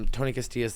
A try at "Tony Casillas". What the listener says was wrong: You're adding an extra T. Tony Casillas.